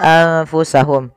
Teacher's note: Kita membacanya menyamarkan nunnya kepada huruf fa.